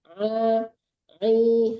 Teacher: Kalau ain itu keluarnya dari tengah-tengah tenggorokan ya.